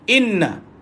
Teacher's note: wajibal gunna tahan dan lepaskan pada na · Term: Wajibal gunnah